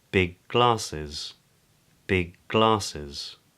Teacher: ‘big glasses’ sounds more like ‘biglasses’